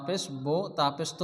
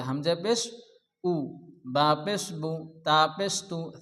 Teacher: আমরা পেশকেও জেরের মতন মারুফ পড়ব, অর্থাৎ পেশকে ওকার পড়া যাবে না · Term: হুস্যুকার